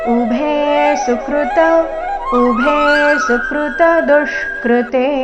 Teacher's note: ಎರಡನೇ ಚರಣದಲ್ಲಿ ಒಂದೇ ಒಂದು ಅಕ್ಷರದ ಮೇಲೆ ಆಘಾತ ದು ಮೇಲೆ ಬಂದಿದೆ ದುಷ್ಕೃತೆನಲ್ಲಿ ದು ಮೇಲೆ ಆಘಾತ ಮತ್ತೆಲ್ಲಿಯೂ ಆಘಾತ ಇಲ್ಲ ಉಭೆ ಸುಕೃತ ಉಭೆ ಸುಕೃತ